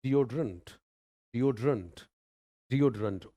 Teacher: ओ पे आवाज थोड़ी सी ऊपर जाएगी